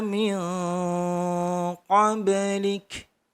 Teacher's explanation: Kemudian mil qablik nun sukun bertemu qaf itu juga ikhfa didengung 3 ketukan dan di ba sukun qab harus memantul karena itu adalah bacaan qalqalah